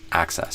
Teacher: access, so with an a and the stress on the first syllable, access.